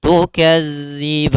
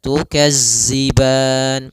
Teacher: Maka latihannya agar tidak terbaca dengan huruf zai itu ujung lidah kita menempel dengan gigi seri atas sehingga terdengar dengan sempurna untuk makhraj daripada makhraj huruf dzal